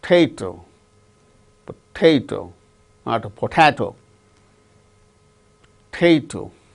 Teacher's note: The second syllable gains stress